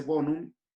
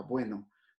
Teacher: en latín se decía bonum y la O se va a transformar de O a UE, de O a UE. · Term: diptonga en UE